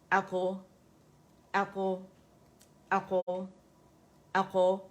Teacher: Arabs کیا کرتے ہیں کہ اس میں قلقلہ کرتے ہیں تاکہ لیٹر واضح ہو